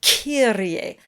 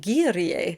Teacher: behind the K sound is this air explosion